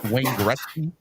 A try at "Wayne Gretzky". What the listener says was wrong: Gretzky, not Goretzky. Come on, man. It's not 3 syllables. It's 2.